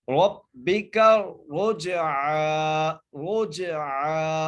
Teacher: را بھی موٹا ہو، جیم پر قلقلہ بھی ہو اور عین بھی ادا ہو · اور آگے عین، عین کے اوپر کھڑی زبر ہے، ایسے ہی ہم اس کو کھینچ کے پڑھیں گے، ایک الف کی مدار عین کو کھینچ کے پڑھیں گے